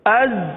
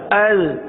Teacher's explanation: زا میں تو سیٹی کی آواز آئے گی، ذال میں نرمی ہوگی